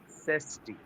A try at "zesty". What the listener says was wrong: Z has the pronunciation of Z or Z. So it should be pronounced like that. There is no feature of J in there. So zesty, zoo, zoo.